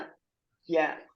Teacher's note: നാവിന്റെ മധ്യഭാഗം അതിന്റെ നേരെ മുകളിലുള്ള അണ്ണാക്കി കൊള്ളണം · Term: അറബിയിലെ യ